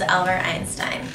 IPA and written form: ˈælbərt ˈaɪnstaɪn (Albert Einstein)